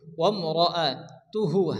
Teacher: আমরা আরবিতে পড়েছি যে 8টি অক্ষরের উপর যদি কি আসে জবর আসে তাহলে কি হয়, ওয়াকার উচ্চারণ হয়, তাহলে এখানে র জবর র হবে এবং রপুর হবে। ওয়াম র আ তুহু, হা উল্টে বেশ হু, এখানে ওয়াম মাদার মতো এগারি টান দিয়ে পড়তে হবে।